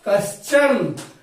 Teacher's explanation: अब आप बता सकते हैं कि विसर्ग के बाद च है तो विसर्ग तालव्य स में बदलेगा